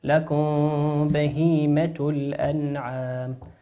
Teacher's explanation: ميم ساكنة أتى بعدها حرف الباء فتخفيها